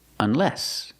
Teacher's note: put the stress on the second syllable